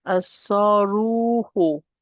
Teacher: it's a heavy letter and I'm dropping the lam